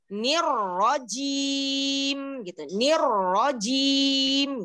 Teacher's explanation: Huruf jim itu ada di tengah lidah, ketemu dengan langit-langit tengah gitu.